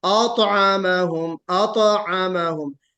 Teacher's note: अत बिल्कुल अलग हो और आ बिल्कुल अलग, है ना, बिल्कुल ता के ऊपर जो سکون ہے اس سکون کو بھی ظاہر کیجئے.